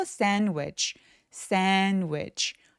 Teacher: 요 중간에 D 발음 삭제됩니다. 이거 왜 그러냐면 NDW 이렇게 자음이 3개가 뭉쳐있을 때 중간에 낀 D나 T 소리들이 많이 삭제가 돼요